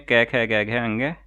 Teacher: और यहाँ आवाज़ आती है कंठ से, यह उच्चारण स्थान है कंठ। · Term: कवर्ग